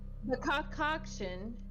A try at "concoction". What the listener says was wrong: Not two cocks. You don't need two cocks when you say it.